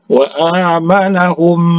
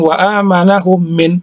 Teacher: Mim mati bertemu dengan huruf mim yang hidup, maka dibaca didengungkan.